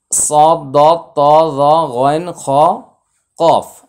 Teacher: সাতটি হরফ জিহ্বার সাহায্যে মুখের ভিতর থেকে মোটা হবে কিছুতেই মুখ গোলাকার করে ঠোঁট গোলাকার করে মোটা হবে না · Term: মোটা হরফ